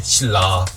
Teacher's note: 니은이 리을의 영향을 받아가지고 리을로 바뀌잖아요